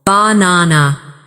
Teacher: in the word banana, the stress is on the second syllable, banana.